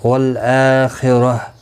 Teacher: والآخرہ، لام ساکن کو ہلانا نہیں، حمزہ کے اوپر کھڑی زبر ہے، ایک الف کی مقدار کے برابر کھینچ کر پڑھیں گے. خا مستعلیہ ہے، پر پڑا جائے گا، را زبر کی وجہ سے پر پڑا جائے گا. وقف کی صورت میں گول تا ہا ساکن پڑھیں گے، وقف بالابدال ہوگا.